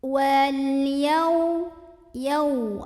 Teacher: ada alif lam qamariyah karena ada alif lam yang bertemu huruf qamariyah yaitu ya. Maka lamnya dibaca dengan jelas.